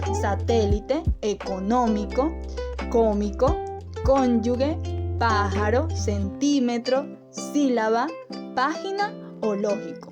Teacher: las esdrújulas, porque estas siempre se acentúan en la antepenúltima sílaba